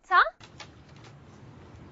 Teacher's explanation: The tip of the tongue is touching the ridge. Nasal cavity is closed. Vocal falls. No vibration.